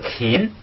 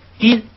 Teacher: 单独读是勤，然后那个如果不送气呢是金